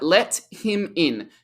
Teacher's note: And because we have a T with a vowel sound, im, the T is a flap T. So in American English, the flap T becomes a D sound.